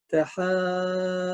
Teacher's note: مد ستة حركات لأنه بعد الحرف المد يوجد حرف مشدد